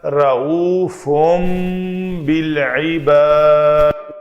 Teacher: اس نون کو میم سے بدل کر پڑھنا ہے. تو یہ لفظ بن جائے گا رعوفم بالعباد، دال کے اوپر قلقلہ ہوگا.